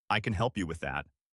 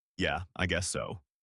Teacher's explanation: I can help you with that. with a bright, helpful tone versus a mumbled, Yeah, I guess so.